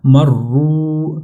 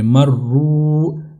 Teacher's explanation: واو مدہ ہے چونکہ اس سے پہلے پیش ہے تو اس لیے اس کو تھوڑا لمبا کریں گے